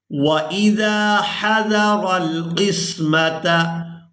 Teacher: हमजा को बगैर खींचे और बगैर झटके के अदा करेंगे